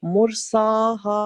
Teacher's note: سین پر vertical فتح کھڑی زبر ہے, اس کی بھی 2 سیکنڈ آواز لمبی کر کے پڑھیں